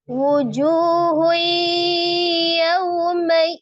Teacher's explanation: Kemudian ada huruf ta marbutah berharakat dah tanwin ketika diwakafkan menjadi sukun. T marbutah yang disukunkan menjadi bunyi huruf ha.